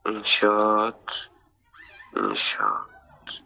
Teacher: İnşaatda A-nın biri düşür, biri uzanır da. Qoşa eyni cinsli qoşa saitdir deyə.